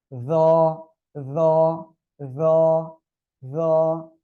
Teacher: উচ্চারণটা করবেন হলো জিহ্বার আগা, এই উপরে দুই দাঁতের আগার সঙ্গে লাগাবেন। লাগান লাগান, লাগিয়ে উচ্চারণ করতে হবে র র র র।